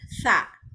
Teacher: sa ini lidahnya digigit, jadi ada T sama S.